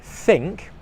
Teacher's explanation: so that sound as in think is unvoiced · So the th sound, as in think, is unvoiced. If you put your hand on your throat like this and you breathe out, your throat should stay still. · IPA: /θ/